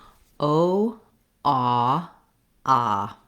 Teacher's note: that ah vowel is rounded it's a little bit more uh closed than the ah unrounded vowel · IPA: /ɔ/